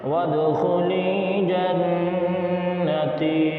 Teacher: وَادْخُلِی جنتی میں لام یا زر لی کو کھینچیں گے اور تا یا زر تی کو کھینچیں گے، باقی جنتی میں یہ جو نون ہے اس پہ تشدید ہے، تو اس نون پر غنہ کریں گے، جیسے جنتی، اس طرح پڑھیں گے۔